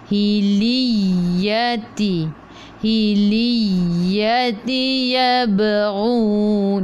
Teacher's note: Yab qalqalah sughra, yab lantunannya kecil. Yabghun, matikan dengan nun.